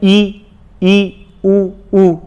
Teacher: संवृत का मतलब बंद, तो लगभग मुंह बंद ही रहता है